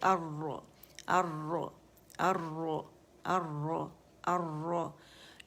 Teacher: रॉ का मखरज जब आप कहते हैं अर्रो अर्रो अर्रो अर्रो अर्रो, ठीक है, तो आपके यहाँ पे ज़बान में थोड़ा सा डिप बनता है ताकि हवा आए जाए और तकरीर हो, और थोड़ी ज़बान जब ऊपर लगती है फिर टर्न हो जाती है, इन्हिराफ होता है उसमें, ठीक है।